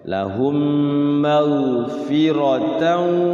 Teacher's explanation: ro-nya dibaca tebal, jangan fira